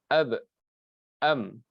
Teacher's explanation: Seperti ab, am, ba dan mim tersebut tempat keluarnya ialah daripada dua bibir.